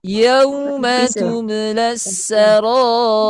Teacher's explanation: karena sebelumnya harakat kasrah sehingga dhammah di sini menjadi sukun. Sehingga bunyinya tarqiq. Bunyinya tipis.